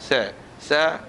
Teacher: sa, ujung lidah dengan ujung gigi kapak.